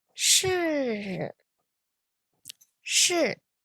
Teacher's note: which is a falling tone it goes from high all the way to low